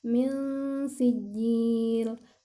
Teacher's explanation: mendengungkan ketika ada nun sukun bertemu dengan huruf sin. Ya, di situ ada min sijil, ada nun sukun bertemu dengan huruf sin.